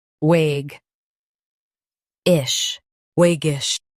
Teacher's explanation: Emphasize wag and soften ish.